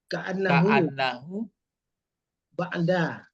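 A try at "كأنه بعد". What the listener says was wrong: Jangan ba'da. Ikulah ba'uda itu mengkodai orang baris. Ka'annahu ba'uda anil khairi au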